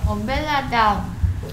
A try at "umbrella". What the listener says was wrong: 엄벨라가 아니고요. 이거 무슨 소리 내고 있어? 브레. 브레. 을라.